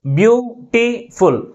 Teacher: First సిలబలే మిగిలిన syllables కంటే ఎక్కువ ఫోర్స్ గా పలుకుతుంది. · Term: ప్రైమరీ స్ట్రెస్